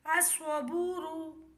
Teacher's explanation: Number 9 میں بھی سواد ہے، سواد میں ہے الصبور۔ اس میں بھی لام خاموش رہے گا، الف کو سواد سے ملائیں گے۔ حمزہ سوا زبر اس، سوا زبر سوا، السوا، با واو پیش بو، را پیش رو، الصبور۔